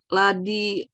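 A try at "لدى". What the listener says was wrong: Oh, lada, bukan ladi, lada. Ya, ini alifnya alif maksurah.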